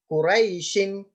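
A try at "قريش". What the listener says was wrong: Try to make the ra a bit more round. So rai, y instead of saying rai. So urai shin. again, a bit more round. Urai shin.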